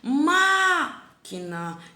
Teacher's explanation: Então a sílaba tônica é no má, né? Ela é a sílaba mais forte.